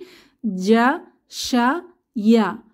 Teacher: জিহবার মধ্যভাগ থেকে যে হরফগুলো বের হয়, জিম, শিন এবং ইয়া